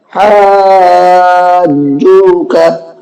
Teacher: مد لازم کا قاعدہ ہے، 3 سے 5 الف کے برابر کھینچنا ہے